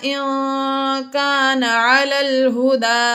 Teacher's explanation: نون ساکن کے بعد کاف حروف اخفا میں سے آ گیا اس لیے یہاں پر بھی ہم نے غنہ کیا